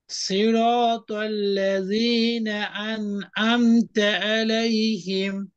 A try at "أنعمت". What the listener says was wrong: এখানেও হামজার মতো হয়ে গেছে, আনআমতা, গলা চেপে গলা চেপে।